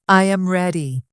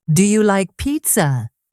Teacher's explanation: when you ask a yes or no question, your voice goes up at the end.